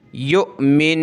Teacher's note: ये देखिए हमज़ा, इसके ऊपर जज़म, ये हमज़ा साकिना है, हमज़ा साकिना को पढ़ते वक्त झटका दिया जाता है। या हमज़ा पेश यु, वाव को नहीं पढ़ेंगे, ठीक है।